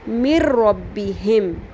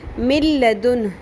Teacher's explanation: جب نون ساکن یا تنوین کے بعد حروف یرملون میں سے لام یا را آ جائے تو وہاں ادغام بغیر غنہ کرتے ہیں، یعنی نون ساکن اور تنوین کی آواز کو لام اور را کے ساتھ ملاتے ہوئے غنہ کے بغیر پڑھتے ہیں